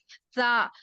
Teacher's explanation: زا زبان کی نوک کو نیچے کے دو دانتوں کے جڑ میں لگانے سے زا ادا ہوتا ہے۔